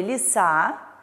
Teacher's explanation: и произносятся как звук а или например слове леса у нас буква е произносится как звук и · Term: редукции